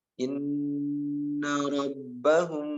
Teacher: inna nun tasydid sudah dibahas sebelumnya, harus ditahan 2 harokat ya. Inna rabbahum, nah ini mim sukun bertemu dengan ba, namanya ikhfa safawi, harus ditahan juga.